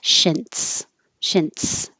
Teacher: You'll have an N, stop the airflow, and make it S.